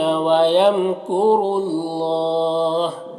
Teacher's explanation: وَيَمْكُرُ اللَّهُ، یہاں پر میم میں بھی اظہار شفوی ہو رہا ہے، را کو پر پیش ہے، را کو پر پڑھیں گے اور یہاں پر اللہ کے لام سے پہلے را کو پر پیش ہے تو اللہ کے لام کو پر پڑھیں گے اور کھڑا زبر ہے یہاں پر، اگر یہاں پر وقف کریں گے تو یہاں پر بھی مد عارض وقفی ہوگا تو اس طرح سے پڑھیں گے۔